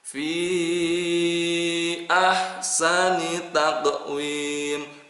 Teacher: itu adalah hukumnya mad jaiz munfasil. Ya, panjangnya 6 harokat.